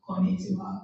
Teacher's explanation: something different from English is each syllable has equal length. This means like if you say konnichiwa, like means hello, as she said, konnichiwa, like konnichiwa, each syllable, I point out, konnichiwa, each letter has equal length.